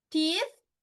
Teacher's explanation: teeth silent unvoiced sound එකක් එන්නේ නැහැ එළියට vocal cords use වෙන්නේ නැහැ